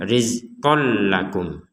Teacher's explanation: Jadi tidak ada dengungan sama sekali. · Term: dimasukkan